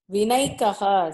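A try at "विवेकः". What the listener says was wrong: From where you get a naikaha? Nakara, from where you got this? Nakara itself is not there. You are inserting. It is Vivekaha. How you get Vinekaha?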